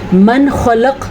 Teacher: قاف کو ساکن کرنے کی وجہ سے یہاں پہ قلقلہ ہو رہا ہے